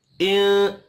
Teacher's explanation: नून साकिन के बाद काफ इख्फा हकीकी होगा।